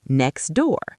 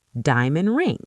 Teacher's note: when words end in t or d and the next word starts with a consonant, we just completely drop the t or d. It disappears. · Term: Elision